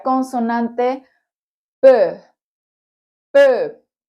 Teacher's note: Primero se obstruye el aire y sale en forma de explosión. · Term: consonantes oclusivas